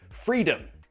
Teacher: The second syllable is not. It's unstressed, so schwa. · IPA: /ə/